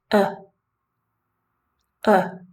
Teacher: a very weak vowel sound in which our mouth is relaxed our tongue is Center and we just let our mouth full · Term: schah sound